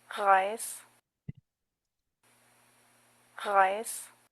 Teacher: Debemos de hacer que nuestro dorso de la lengua se levante, haciendo vibrar la úvula y luego, claro, la vibración de las cuerdas vocales tiene que ser necesario porque es un sonido vibrante. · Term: R fuerte